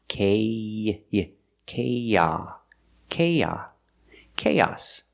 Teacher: When you link these 2 vowels, the long A and the short ah sound, we link them with the y sound, like in yellow and yesterday.